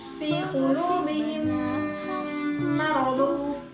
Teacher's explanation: dengan menambahkan gunnah yang ditahan selama 2-3 harokat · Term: idgham mimi